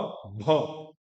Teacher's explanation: भ वही महाप्राण, महाप्राण मतलब प्राण आपका ज्यादा आना चाहिए